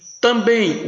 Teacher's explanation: Também, o M com som de I.